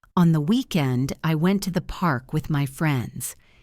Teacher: Hear how smooth that sounds. There is a small pause between the chunks, but the flow continues.